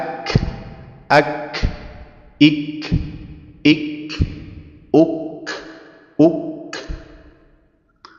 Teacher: dia terdapat sifat hamz atau mengalirkan udara